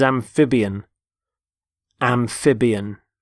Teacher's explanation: Notice the stress on the middle syllable.